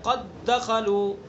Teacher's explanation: پہلا دال جو ہے ساکن ہے اور دوسرا دال متحرک ہے، تو پہلے دال کا دوسرے دال میں ادغام کر دیا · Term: ادغام مثلین